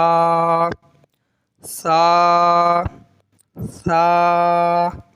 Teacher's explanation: باریک پڑھیں گے سا کو. سا میں سیٹی نہیں نکلے گی.